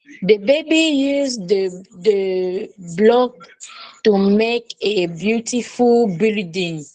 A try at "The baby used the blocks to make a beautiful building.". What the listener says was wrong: Okay, so I want you to try again and remember to read the word with the sound of S, blocks. So the baby used the blocks to make a beautiful building.